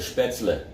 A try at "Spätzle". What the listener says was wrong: The E in German is usually pronounced, it's not silent.